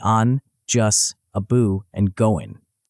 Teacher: Words like and, just, about, and going frequently lose their final consonants in casual speech, becoming on, just, abu, and goin.